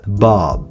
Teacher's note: Pour la dernière consonne, on va se contenter de refermer les lèvres pour suggérer le B